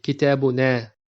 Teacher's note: the dhamir is na with elongated a sound